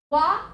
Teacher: वा आपका दंत और ओष्ठ से मिला के बोला जाता है,